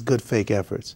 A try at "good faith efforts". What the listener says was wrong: You're saying good fake. Not good faith. Good fake.